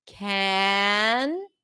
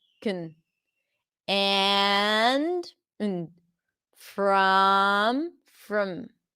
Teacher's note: we keep the consonants and we just make the vowel very small